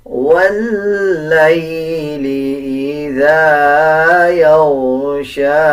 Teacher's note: لام اور یا کو ملا کے پڑھیں گے. واللیل اذا غائن کو پر یعنی موٹا پڑھا جائے گا، شین کو 1 سیکنڈ لمبا کر کے پڑھا جائے گا